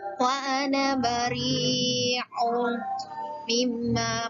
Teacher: dibaca panjang 2 harakat karena fathah bertemu dengan alif, maka dibaca panjang 2 harakat